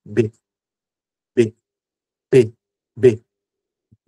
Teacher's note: Ele tem um ponto de articulação que é bilabial.